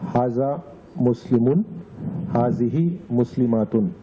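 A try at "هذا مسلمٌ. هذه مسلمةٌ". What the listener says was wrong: There's no alif, right? Go ahead once more.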